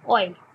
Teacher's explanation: অ একটি স্বরধ্বনি, এ এটিও একটি স্বরধ্বনি। তাহলে দুটি স্বরধ্বনি মিলে একত্রে হয় অয় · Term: যৌগিক স্বরধ্বনি